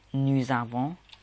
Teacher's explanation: because it's an A, you bring the S into pronunciations